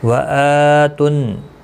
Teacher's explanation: حمزہ کے اوپر کھڑی زبر ہے، ایک الف کی مقدار کے برابر کھینچ کر پڑھیں گے